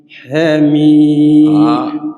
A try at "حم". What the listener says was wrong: حميم حركتين فقط. والميم راك حقرتها.